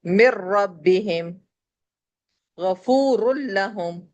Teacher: اب ادغام وداؤٹ غنہ، بلا غنہ، بغیر غنے کے، جب تنوین اور نون ساکن کے بعد لام اور را آ جائے، جیسے نون ساکن کے بعد یہاں را ہے تو ہم نے نون کو بالکل اسکپ کر دیا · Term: ادغام بلا غنہ